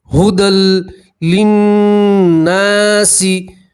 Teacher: नून की आवाज़ को 2 सेकंड के नाक में रोके रखेंगे तो उससे गुन्ना अदा होगा। और नून के साथ अलिफ मद्दा है तो 1 अलिफ के बराबर खींचेंगे भी। · हुदल या नहीं पढ़ेंगे, दाल को सीधा लाम से मिलाएंगे